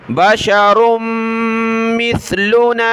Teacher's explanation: रा को मीम के साथ, मीम को सा के साथ मिलाया